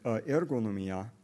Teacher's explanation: And in the analysis, they are typically left unfooted. So in this odd-syllabled word, ergonomia, you don't get any stress on the final syllable.